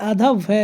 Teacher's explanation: हिंदी की स्पर्श घोष महाप्राण और ओष्ठ व्यंजन ध्वनि है, तो ये जो ओष्ठ व्यंजन ध्वनि है यह आधा भय है, इसका विकल्प नंबर ए जो है राइट आंसर हो जाएगा।